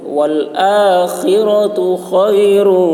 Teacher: خا کی آواز حلق سے ادا کریں گے